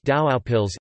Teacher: In this example, the vocalic alternant [u] is realized as the off-glide of the diphthong /au/. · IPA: [dauɡaupils]